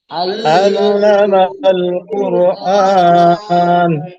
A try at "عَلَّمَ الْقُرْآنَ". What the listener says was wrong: আইনের উচ্চারণটা একটু সুন্দর করে, আল্লামাল কুরআন